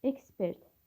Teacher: Ekspert sözünə vurğu birinci hecadadır.